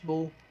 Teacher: پیش کی آواز آگے کو جائے گی اور ہونٹ گول ہوئیں گے۔